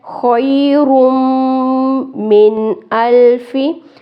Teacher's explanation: خیر، خوئی لفظ پڑھنا ہے، خے نہیں پڑھنا، خیر، میم تشدید آ گیا، پیچھے سے ملاتے ہوئے غنہ کریں گے